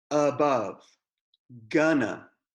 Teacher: the schwa is just the sound of ah